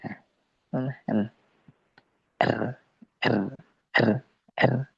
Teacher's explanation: Hanya depan aja yang bergetar